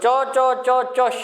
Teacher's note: जहां से च निकलता है वहीं पर फिर से जिह्वा को छुआ के श निकलवाएं, तो आपका ये तालु वाला श निकल जाएगा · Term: तालव्य शकार